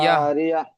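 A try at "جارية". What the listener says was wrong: জি, ইয়া টান দেওয়া যাবে না।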